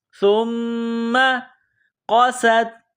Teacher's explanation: یہ نقطوں والا قاف ہے، اس کو موٹا کرنا ہے۔